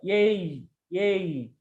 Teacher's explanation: sound like a ae so a sound and e sound so it should be like a single sound a sound glides to e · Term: diphthong